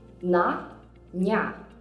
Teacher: in the soft syllables nya, mya, vya, the y sound is not present. It disappears.